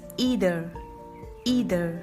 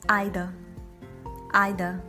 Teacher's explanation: on the r sound in american pronunciation it's either either and in british pronunciation we hardly use any r sound at the last